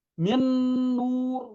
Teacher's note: Nun yang kedua punya tasydid. Seakan-akan nun yang pertama itu nggak ada. Langsung dibaca ke nun kedua. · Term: sempurna masuk